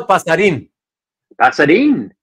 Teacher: Yeah, because in Spanish, the accent tells you which syllable to emphasize more. So since the accent there on the I is on the last syllable, that means you emphasize the in part. So it's Pasadin.